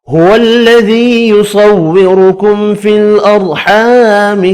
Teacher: هو الذي یا مدہ ہے, ایک الف کی مقدار میں کھینچ کر پڑھیں گے.